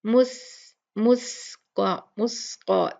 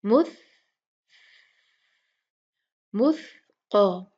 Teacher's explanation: اس میں ہم ہوا کی جو اس کی صفت ہے سافٹ، بہت سافٹ ہوا ہوتی ہے، نرم ہوا، مس سین کے جیسے نہیں پڑھنا